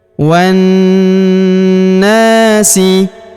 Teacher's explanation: kita tahan dan tekan serta kita dengungkan 2-3 harokat pada huruf nanya karena terdapat tanda tasydid di atasnya.